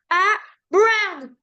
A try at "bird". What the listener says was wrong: Regarde, me mets pas de R au début. C'est bird. Bird.